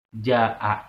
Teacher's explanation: Nah, ja-nya mad tabi'i asalnya, kemudian disusul dengan hamzah, itu namanya mad wajib mutasil. Mad wajib mutasil, mad dan hamzah berada pada satu kata.